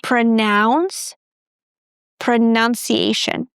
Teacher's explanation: both of them start with the schwa sound.